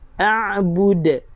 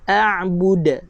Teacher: Jaga waqaf dengan qalqalah kubra. A'bud, ada lantunan. Huruf dal, huruf qalqalah.